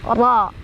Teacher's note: ra-nya dibaca secara tafkhim karena ra-nya barisnya di atas atau fathah. Jadi dibacanya tebal.